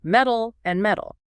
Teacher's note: While the T and D do merge into the flap, the distinction is usually preserved by the vowel length that comes just before the flap